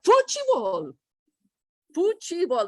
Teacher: So what they did is they added a fuchi, and the T changes to ch in Brazilian Portuguese